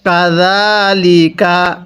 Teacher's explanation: এই জালের মধ্যে আমরা এক আলিফ টান দিব। কারণ হরফের উপর খাড়া চিহ্ন এক আলিফ টানতে হয়।